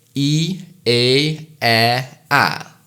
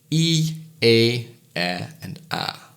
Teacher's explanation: you can feel your tongue moving down in steps when you say these vowels